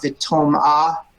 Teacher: This is another case where the kamats is at the beginning of a closed syllable, and it has more of an O sound than an A